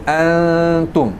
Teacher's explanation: So it will be subject to adjustment depending on which letter comes after. So over here is a ta, so it causes the noon to be half pronounced. So you're letting that flow there in order that the ta can transit out. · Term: gunna of two counts